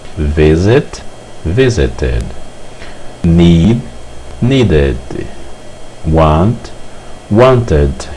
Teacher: Ed que representa o passado será pronunciado ID em inglês